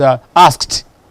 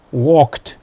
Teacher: your past tense, coming after a voiceless consonant, it is pronounced t